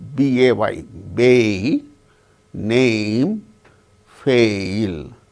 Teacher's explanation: when we utter the word bay, name, fail, it starts with the sound A, ends with the sound E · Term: diphthong